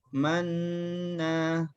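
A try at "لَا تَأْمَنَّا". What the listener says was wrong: Baca sukun dulu. La ta'man. Nah, sukun. La ta'man. Jangan langsung dimonyongkan bibir. Kan belum monyong. Setelah selesai sukunnya, baru monyongkan. La ta'man.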